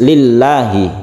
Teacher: lafadz Allah ini dibaca sebagai tarqiq atau tipis lillahi bukan lillahi Bukan tapi lillahi kalau tebal itu namanya tapi